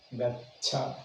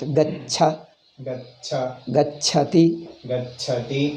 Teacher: First cha is alpa prana. Second cha is mahaprana.